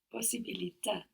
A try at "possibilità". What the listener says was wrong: Good, but we want to hang around a little bit on the S, no? Possibilità. Good, we have two S's there, so we hang around on them. Possibilità.